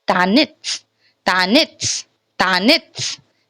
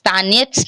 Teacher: So it will be quite not E. We don't have to pronounce E, proper E. We have to like short glimpse of E.